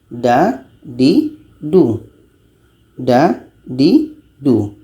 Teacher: Da ini letaknya pada ujung lidah menempel dengan pangkal gigi seri atas.